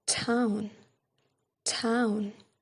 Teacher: we can see they are aspirated or puff of air